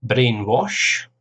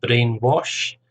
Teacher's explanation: 2 syllables, stress on the first syllable